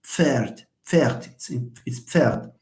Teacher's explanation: it's a Pf sound. And Pf is like Ch. So it's also an affricate